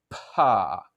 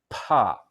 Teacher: when you make a pa, you feel that puff of air in front of your mouth